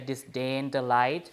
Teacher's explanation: So you have the stress on the last syllable, right? The last syllable, because it ends with an N, and also it ends with a T, for example.